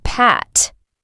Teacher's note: P is voiceless, meaning you don't use your vocal cords like in the word pat.